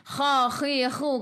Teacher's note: Kha, khi, khu kena ada angin biar menggelegak